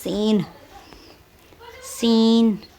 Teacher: اس سین کی جب ہم آواز نکالتے ہیں تو سیٹی کی آواز منہ سے نکلتی ہے